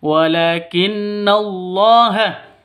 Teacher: Berarti kalau berdiri sendiri gunnah musyaddadah. Gunnah musyaddadah panjang dua ketukan. Dengung bukan panjang tapi dengung dua ketukan.